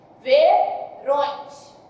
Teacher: Então aí está presente a minha vogal nasal, como são duas, eu tenho um ditongo nasal.